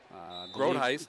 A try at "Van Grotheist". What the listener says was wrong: Van Grotheist. Don't forget the Van.